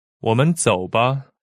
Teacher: 我 is a third tone. 们 here is a neutral tone. 走 is a third tone. 吧 is neutral tone.